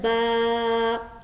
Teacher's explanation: تھوڑا کھینچ کر، تھوڑا کھینچنے کی مقدار ایک الف ہے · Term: الف مدہ